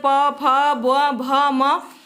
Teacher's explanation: जब हम प, फ, ब, भ, म का उच्चारण करते हैं तो हमारे दोनों ओष्ठ एक दूसरे को स्पर्श करते हैं, इसलिए क्या है, ये ओष्ठ व्यंजन है।